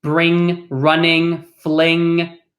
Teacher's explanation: it's going to be like a ng, in the back of your throat, right? You'll probably feel your tongue hit the back of your, somewhere like in the back of your mouth.